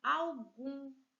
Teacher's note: Gum é a sílaba tônica, é a última sílaba oxítona.